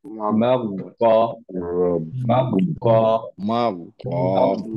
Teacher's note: টাংটা যখন একবার প্রেস করে ফেলবেন গয়নের সুকুনে, তারপরে টাংটা আর মুভ করবেন না, সাউন্ডটা শেষ না হওয়া পর্যন্ত